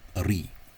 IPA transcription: ɾi: